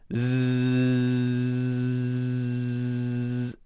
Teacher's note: the sustained z sound which is z z z and notice i can carry it a long time